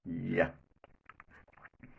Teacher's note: Then the place of articulation is hard palate. The sounds produced here are called palatal sounds.